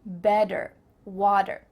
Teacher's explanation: In American English, a T that's between two vowel sounds, it doesn't always have to be a vowel, but between two vowel sounds is going to change to a D.